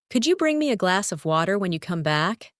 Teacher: In natural speech, could you becomes could-ya, and glass of sounds like glassa.